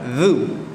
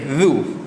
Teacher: Makhraj dia kita gigit kan hujung lidah. Zu. Jangan zu. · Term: huruf za